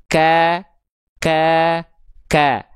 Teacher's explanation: Titik berwarna putih di sini ya sebagai ilustrasi pelafalan huruf kaf. Jadi huruf kaf itu tumpuannya nempel dari pangkal lidah yang nempel ke perbatasan antara langit-langit merah, langit-langit lunak, dan langit-langit bagian depan, langit-langit keras